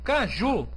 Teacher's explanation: Quando eu digo caju, a última sílaba é pronunciada mais forte, então é uma oxítona. Só que aqui na regra das oxítonas, eu não tenho oxítona terminada em u.